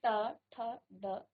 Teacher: ट वर्ग आपके मूर्धा का उच्चारण इसका स्थान है। मूर्धा आपके मुख के अंदर जो मूर्धा स्थान है तो आप उच्चारण कीजिए।